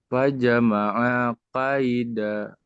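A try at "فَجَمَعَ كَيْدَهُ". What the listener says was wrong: Hu. Ini hu. Ini A-nya pendek ya. Ulang lagi.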